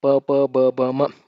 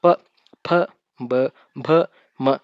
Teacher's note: ತುಟಿಗಳ ಸಹಾಯದಿಂದ ಹುಟ್ಟತಕ್ಕಂಥ ಅಕ್ಷರಗಳಿಗೆ ನಾವು ಓಷ್ಟಾಕ್ಷರಗಳು ಅಂತ ಕರಿತೀವಿ